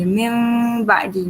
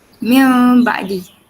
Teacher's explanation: cara bacaan dia adalah kita tak tutup full mulut kita. Kita baca seolah-olah ada mim ringan dan ada pendapat ulama yang mengatakan tandanya cara bacaan iklab adalah kita tutup mulut tu serapat yang seolah-olah kita letak kertas dekat antara bibir kita macam tu.